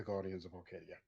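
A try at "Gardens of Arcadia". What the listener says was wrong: You said guardian, not garden. It sounded like you said Guardians of Arcadia.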